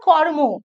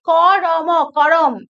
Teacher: সংযুক্ত ব্যঞ্জনের মধ্যে স্বরধ্বনি এনে দুই ব্যঞ্জন ধ্বনিকে বিশ্লিষ্ট করার যে রীতি, তাকে বলা হয় স্বরভক্তি। যেমন কর্ম, এই কর্ম ময় রেফ আছে, কিন্তু স্বরভক্তির জন্য আমরা দেখতে পাচ্ছি সেটা হয়ে গেল কি করম, করম।